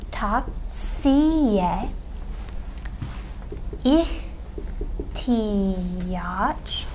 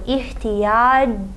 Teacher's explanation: Because we're adding to the end of the noun ihtiyaç a possessive suffix that begins with a vowel, we're going to see that che, this che, undergoes consonant alternation and becomes a j